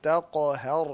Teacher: ہا کو باریک کریں اور را کو موٹا کریں